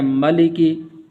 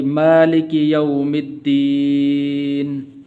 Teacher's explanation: میم کے اوپر کھڑی زبر ہے تو اس کو بھی لمبا کرنا ہے